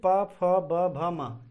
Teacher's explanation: अब प वर्ग में ओष्ठ में देखते हैं हम, प वर्ग जो ओष्ठ की सहायता, देखिए अब जैसे बोलोगे प मतलब ओठ दोनों स्पर्श हो रहे हैं